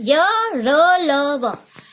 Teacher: अंतस्थ व्यंजन जो कि हमारे कंठ से निकलते हैं